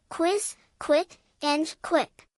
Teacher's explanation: your vocal cords don't vibrate when you make the K sound, but they start to vibrate when you move to the W sound. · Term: KW sound